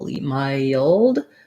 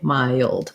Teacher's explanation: when we link from the I to that dark L, mild, we have a little schwa before the L because it's a dark L.